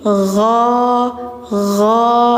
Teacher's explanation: Jadi enggak go tapi gho gho tenggorokan ujung